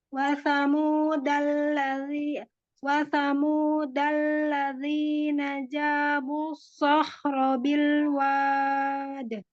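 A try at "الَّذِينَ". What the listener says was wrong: Za-nya ladhi, tidak ladhi, tidak tebal. Ladhi, ladhi.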